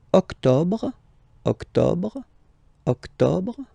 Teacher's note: Don't insist on the final E.